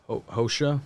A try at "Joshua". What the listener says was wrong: No. Well, if it's Jose, right? But make the J a J, not a not Spanish. No. Joshua. Joshua.